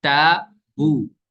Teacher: تابو میں الف سے پہلے تا یہ باریک حرف ہے، الف بھی باریک ہو جائے گا